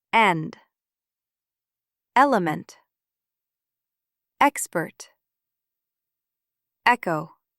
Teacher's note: With stress on the first part, E makes eh. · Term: stressed E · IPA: /ɛ/